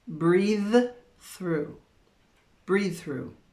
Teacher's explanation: These are paired together because we have TH sound. Yes, the sounds are a little different. We have a voiced and a unvoiced.